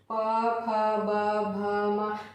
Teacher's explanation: प फ ब भ म ये क्या होते हैं, ओष्ठ भाग से जो है बाधित होकर के इनका उच्चारण किया जाता है, इसे इन्हें क्या कहा जाता है, ओष्ठ व्यंजन कहा जाता है।